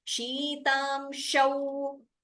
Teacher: The Aukara should be more clearly heard. It shouldn't be heard as Okara.